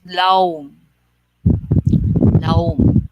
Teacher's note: In Bisaya, deep is lalum. When you go to Cebu, it doesn't become lalum, but they change the L to W. So it becomes laum, laum.